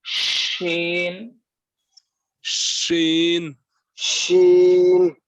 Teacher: जबान का बीच ऊपर लगे और उसके मुकाबिल ऊपर का तालू